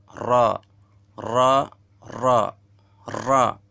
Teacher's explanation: Kemudian yang ke-10, keluar dari ujung tepi lidah lebih masuk ke dasar lidah daripada huruf lam dan menepati langit-langit mulut atas